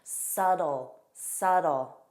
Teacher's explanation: And notice that T is pronounced as a soft D in American pronunciation.